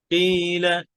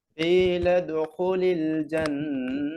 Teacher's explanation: কিলা জিব্বার গোড়া, আকসাল লিসান। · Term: কাফ